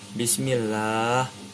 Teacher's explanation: huruf lam dibaca tarqiq atau tipis